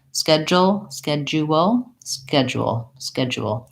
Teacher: even when I do three syllables I want these syllables to be quite fast and light